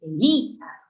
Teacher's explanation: En este caso, no es Elía, no es Elías, es Elías, con acento en la vocal cerrada. Eso es un hiato acentual, por ejemplo.